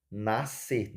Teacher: o som da letra S também é engolido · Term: dígrafo